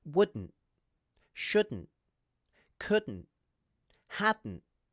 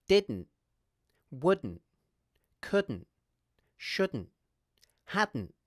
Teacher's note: I'm ending all of these contractions, along with didn't, with a glottal stop